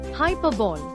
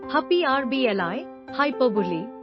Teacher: the stress is on the second syllable and it ends in li, not don.